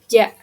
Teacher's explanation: Nah, bunyi paduan ini adalah gabungan dari dua proses, yaitu letupan dan geseran. Sehingga bunyi ini itu yang awalnya keras lalu berubah menjadi lembut